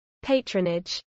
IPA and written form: ˈpætɹənɪdʒ (patronage)